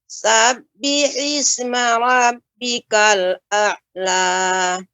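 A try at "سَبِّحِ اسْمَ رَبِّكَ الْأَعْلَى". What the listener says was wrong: Ainnya lebih ditampakkan lagi Ibu. A'la. Kemudian Ibu, pengucapan sab ya ketika membaca sab ya, jangan terasa seperti agak panjang Ibu. Ketika mengucapkan sabbihis seharusnya langsung sabbihis ya, tidak sabbihis. Nah, ini ya agak terasa panjang.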